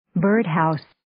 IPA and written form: 'bɜːrd,haʊs (Birdhouse)